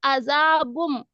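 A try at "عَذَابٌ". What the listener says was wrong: बुन. बुन बुम नहीं, अदा बुन.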